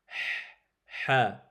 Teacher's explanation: Le ha, il sort du milieu de la gorge.